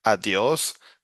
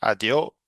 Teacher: if you move to the coast, well, they always are dropping the last uh, s. So for example, instead of saying adios, they say adio, right?